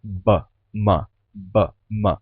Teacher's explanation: e o m São muito parecidos né ba ma ba ma os dois são bilabiais a diferença é que o m é nasal